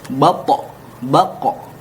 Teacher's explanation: Sedangkan to dan qaf dikarenakan keduanya adalah huruf isti'la yang ketika diucapkan lidah terangkat ke atas, maka mantulnya adalah ke o